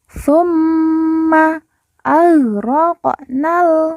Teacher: Q sukun kita baca pantul · Qaf sukun kita baca pantul karena qaf sukun merupakan salah satu dari huruf qalqalah atau huruf pantul.